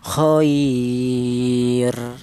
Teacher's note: rnya dibaca tarkik atau dibaca tipis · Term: ro tarkik